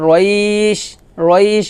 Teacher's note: লিনের হরফ হলে তাড়াতাড়ি করে পড়তে হয়, কিন্তু লিনের হরফের পরের হরফে যদি ওয়াকফা আসে তাহলে তাকে বলা হয় মদ্দে লিন, আর মদ্দে লিন এক লিফ টেনে পড়তে হয়। তো আমরা যদি এখানে ওয়াকফ ধরি তাহলে রইশ, রইশ এভাবে ওয়াকফ ধরবো এবং এক লিফ টান দেবো।